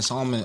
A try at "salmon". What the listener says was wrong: L in salmon is not a thing. It's not silent. salmon is not silent. Yes.